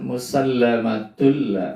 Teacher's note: Musallamatul itu idgham bila gunah karena tanwin ketemu dengan huruf lam, tidak dibaca dengung, masuk tapi tidak dengung.